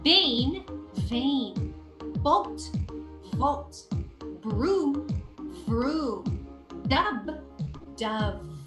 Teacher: b b is an explosive sound and V your teeth should be on top of your lower lip and it's vibrating